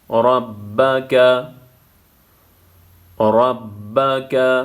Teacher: را زبر کی صورت میں پر پڑا جائے گا.